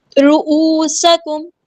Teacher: واو مدہ ہے، یہاں پہ ہم 2 کاؤنٹ لمبا کریں گے ، را ہمارا ہیبیٹر پورا ادا کریں گے، سین کی سیٹی